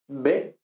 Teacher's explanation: en los dos casos yo lo que he hecho ha sido cerrar los labios y luego abrirlos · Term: labial